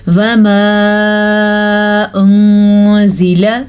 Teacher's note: اچھا جی، یہاں پہ جو مد آپ کو نظر آ رہی تقریباً یہ والی مد 2 سے 3 سیکنڈ تک لمبی کی جاتی ہے، اور یہاں پہ اخفا کا قاعدہ ہو رہا ہے کیونکہ نون ساکن کے بعد زا حروف اخفا میں سے آیا ہے تو نون ساکن کو ہم چھپے ہوئے غنے کے ساتھ پڑھیں گے